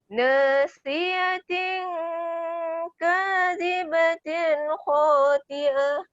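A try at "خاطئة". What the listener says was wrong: Khati'ah. Ta tebal sikit.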